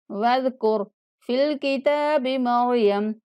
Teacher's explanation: واذکر زال کو نرمی کسے پڑھیں گے، را کو موٹا پڑھنا ہے